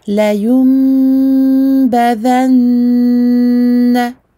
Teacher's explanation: À chaque fois que je vois ce noun avec sa shadda, je lui donne une très longue durée.